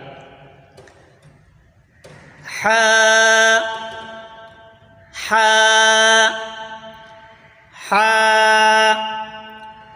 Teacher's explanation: حلق کے درمیان والے حصے سے ادا ہوتا ہے۔ حا، حلق کے درمیان والے حصے سے ادا ہوتا ہے۔